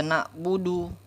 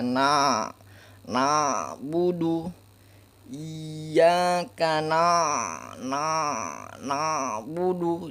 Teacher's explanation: sifat tawassud atau bainiyah yang dimiliki huruf ain ini, antara tertahan dan tidak tertahan ya, di tengah-tengah antara sifat sida dan rokoa.